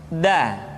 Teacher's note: diucapkan dengan menyentuhkan ujung lidah kita dengan bagian gusi gusi dua ujung dua gigi seri bagian atas